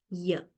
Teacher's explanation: palatal semi-vowel, because we use the hard palate